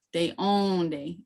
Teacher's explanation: you have to draw out that second syllable in the word